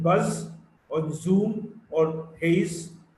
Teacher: Z is a voiced alveolar fricative. Z in buzz, or zoom, or haze.